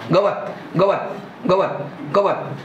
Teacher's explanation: त पूर्ण वाटतच नाही, म्हणजे त निवृत्त आहे. · व जास्त आहे, ग त्याच्यापेक्षा कमी आहे आणि त सगळ्यात कमी आहे. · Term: निवृत्त उच्चार